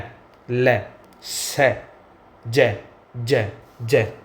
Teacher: उच्चारण करते समय जीभ वर्तस्य स्थान को स्पर्श करती है। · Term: वर्तस्य ध्वनि